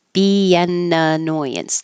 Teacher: BN, there's an invisible Y